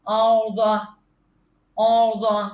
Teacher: الارض تو یہ زوات تو ہم نے موٹا کرنا ہی ہے منہ کو بھر کے پڑھنا ہے را بھی ہم نے منہ بھر کے پڑھنا ہے